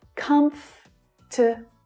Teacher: the first syllable is the stressed one, and the following syllables reduce down to the schwa sound.